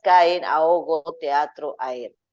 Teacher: las vocales se separan rompiendo así la unidad de una sílaba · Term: iato